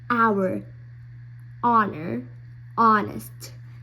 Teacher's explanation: we don't say the H. It's not pronounced.